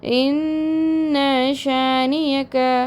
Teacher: நீங்கள் வந்து குன்னா செஞ்சு 2 கவுண்ட்ஸ் நீட்டி ஓதணும்